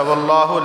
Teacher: واللہ لفظ اللہ سے پہلے زبر ہے تو لفظ اللہ کو موٹا پڑھا جائے گا